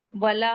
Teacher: वला वाव को जल्दी पढ़ेंगे। लाम के बाद का अलिफ मद्दा है, टू काउंट पढ़ेंगे।